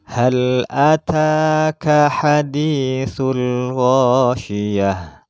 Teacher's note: Ha di sini termasuk huruf halqiyah, yaitu tempat keluarnya ada di tenggorokan, yaitu tenggorokan bagian bawah.